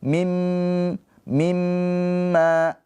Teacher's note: Mim yang bertasydid namanya ghunah musyaddadah. Ditahan dua harakat dengung ya. Dengung yang sempurna. Mingkem bibirnya. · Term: gunnah musyaddadah